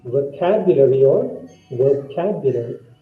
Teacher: The stress should be on the second syllable.